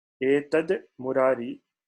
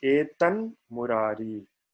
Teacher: this dakara changes to nakara. That is the corresponding anunasika in the same varga. Etad murari becomes etan murari.